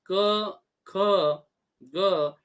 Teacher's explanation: आपण जेव्हा क, ख, ग असा उच्चार करतो तेव्हा त्यात अ हा स्वर मिसळून आपण त्यांचा उच्चार करतो. कृ अधिक अ म्हणजे क या प्रकारचा तो पाय मोडलेला असतो.